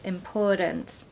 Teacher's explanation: that T in the middle is a D sound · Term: American D